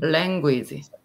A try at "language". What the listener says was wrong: Language. So you don't need the E at the end. It's kind of like j. So we have this sort of j sound.